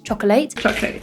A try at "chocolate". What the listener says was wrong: Yeah, careful, we have the classic schwa sound, chocolate, just 2 syllables, chocolate. So we can remove the word late from chocolate because chocolate never arrives late.